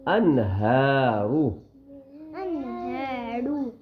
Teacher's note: نون کی آواز ناک میں نہیں چھپے گی، فوراً پڑھیں گے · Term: اظہار